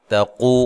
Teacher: قاف کو موٹا، تا کو باریک، قو و مدہ ہے